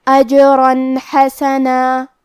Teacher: ہم یہاں تنوین ظاہر کریں گے اور اسے نون ساکن پڑھیں گے اور بغیر غنہ سے یہ حکم کو ادا کریں گے